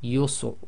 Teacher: sometimes the Ra is almost not audible